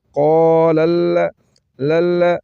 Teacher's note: لام مشدد ہے دو مرتبہ پڑھیں گے